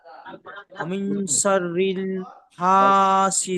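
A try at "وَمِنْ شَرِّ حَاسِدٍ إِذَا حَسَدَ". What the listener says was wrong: লাম হয়ে যাচ্ছে, শাররিল নেই, শাররি।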